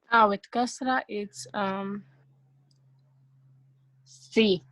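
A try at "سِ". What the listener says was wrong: C. Make it long. See? See?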